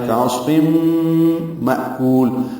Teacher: حمزہ ساکن جھٹکے سے ادا ہوگا